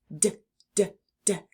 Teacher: touch your tongue to the back of your teeth while also releasing a puff of air but letting the sound come from your throat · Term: D sound